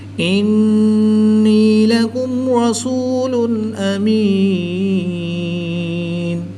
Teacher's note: نون مشدد ہے تو یہاں پر غنہ آنی کر کے پڑھیں گے۔ یاد رہے کہ غنہ کی مقدار ایک الف یعنی 2 حرکات کے برابر ہے، اس سے زیادہ لمبا غنہ نہیں کریں گے